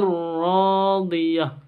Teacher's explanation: Karena tanwin berjumpa dengan ro. Bacanya langsung masuk ke ro tanpa didengungkan. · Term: idgham bila gunnah